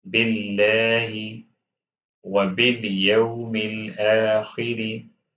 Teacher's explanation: This lam in the word of Allah will be read lightly because the previous letter has kasra.